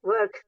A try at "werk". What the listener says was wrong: Werk. Werk. Ya, bukan work. Tadi work kan. Tadi curi-curi bahasa Inggris, bukan Werk.